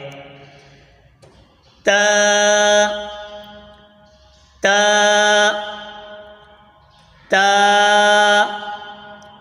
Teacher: जबान की नोक और ऊपर के दांत की जड़ से अदा होता है · زبان کی نوک اور اوپر کے دانتوں کی جڑ سے ادا ہوتا ہے